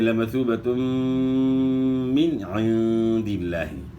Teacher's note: اظہار ہوگا، یعنی غنہ نہیں ہوگا نون ساکن میں